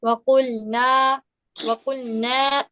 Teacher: नाक में आवाज नहीं लेके जानी है, अपने ना बाहर निकालिए